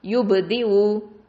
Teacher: ப சுக்குனுக்கு கல்கலா கொடுக்கணும்